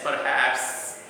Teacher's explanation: the final syllable is stressed in the pronunciation of the word perhaps